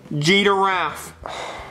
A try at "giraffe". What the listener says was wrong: No, it's not G-giraffe, it's giraffe. There's no D, where's the D? Show me the D. Where's the D? It's giraffe. No, it's giraffe. Stop saying G-giraffe, it's giraffe.